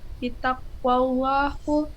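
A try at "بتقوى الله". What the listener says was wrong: Bitaqwallahi. Udah jelas-jelas itu hi.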